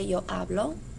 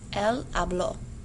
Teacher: For present tense, your stress is on the first syllable. You say yo hablo. For the preterite, your stress is on the second syllable.